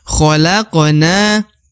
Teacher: huruf na di ujung dibaca Dua harakat ya karena ada Alif